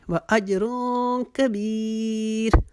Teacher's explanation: یہاں پر جیم کے اوپر چونکہ جزم آئی ہے یہاں پر القلا کریں گے